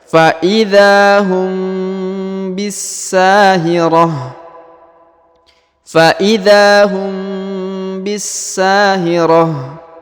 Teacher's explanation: Kemudian huruf mim bertemu dengan ba ya, mim sukun bertemu ba, maka didengungkan seakan-akan menyebut huruf ba ya.